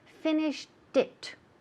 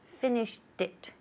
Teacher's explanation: Como finished, ya termina en T, el sonido de T, y pegamos it al culillo, justo al final. Entonces hay que decir finished it, como si fuera T-I-T, right?